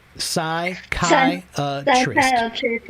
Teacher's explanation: the P is quiet. You don't say the P at all